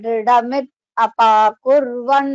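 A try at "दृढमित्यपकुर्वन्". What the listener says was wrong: You're stopping at Dridhamit and then saying Apakurvan. It is not like that. Dridhamitya. See the letters on the screen.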